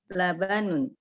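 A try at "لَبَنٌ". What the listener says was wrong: Labanun, enggak panjang Bu ya. Labanun, lanya tadi kepanjangan.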